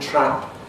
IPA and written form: trap (TRAP)